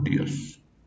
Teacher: dentro de la estructura aparece la I y la O, lo que forma un diptongo creciente. Y sabemos que el diptongo creciente tiene que estar junto en una misma sílaba.